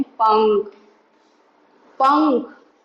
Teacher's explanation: पंख, पंख, नाक से आवाज आ रही है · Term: अनुस्वार